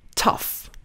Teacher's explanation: Notice how the letters GH in tough actually sound like an F, tough.